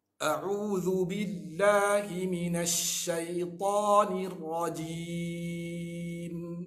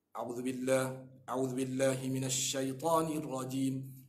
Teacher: Huruf alif atau hamzah, kita jangan lupa padanya tu sifat jahar. Apa maksud jahar? Yakni terang. Kita jangan baca cara tak terang.